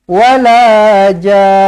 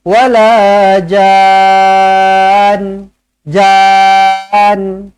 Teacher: disebabkan ada sabdu kena dengungkan dua harakat